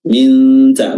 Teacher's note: kita menyamarkan huruf nun dengan meletakkan makhraj huruf ta. Minta, makhraj huruf ta adalah ujung lidah bertemu dengan pangkal gigi seri atas. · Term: ikhfa